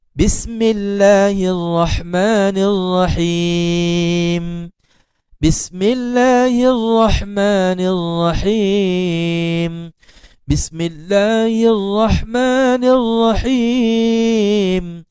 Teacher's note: Tidak ada getaran pada huruf ra yang bersabdu.